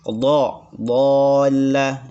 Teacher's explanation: pinggir lidah bertemu dengan geraham gigi atas.